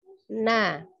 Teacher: ujung lidahnya dia bertemu dengan langit-langit di depannya ya jadi di sini bertemu dengan langit-langit di hadapannya itu bunyi huruf nun